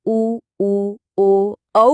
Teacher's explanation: उ ओ औ बोलने पर जीभ का पिछला हिस्सा काम करता है। तो ये हुए पश्च स्वर।